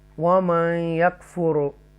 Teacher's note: یہ یہاں دیکھیں وَمَن یکفر ادغام کریں گے، تفخیم کے ساتھ را کو پڑھیں گے، یہاں پر یہاں ادغام کریں گے بیکاز نون ساکنہ کے بعد یا حروف یرملون میں سے ہے